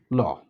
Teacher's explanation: জিহ্বার অগ্রভাগকে মুখের মাঝামাঝি দন্তমূলে ঠেকিয়ে রেখে জিহ্বার দুই পাশ দিয়ে বায়ু বের হয়ে যায়, হ্যাঁ, এই জন্য এটাকে পার্শ্বিক ধ্বনি বলে, ল।